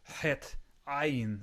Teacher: Het and ayin come way from the back of the throat. Het, ayin, way guttural, something heartier, something more forceful.